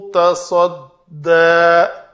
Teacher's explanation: صاد کو پر کر کے دال پتلا کرنا ہے